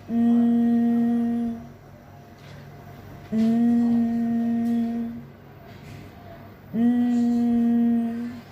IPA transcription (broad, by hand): ŋ